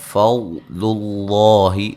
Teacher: لفظ اللہ کو موٹا ادا کریں گے، اس سے پہلے حرف پر پیش ہے